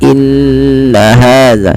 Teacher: tidak langsung inna hadza, tapi tahan dulu sepanjang 2 harakat, inna hadza. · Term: gunnah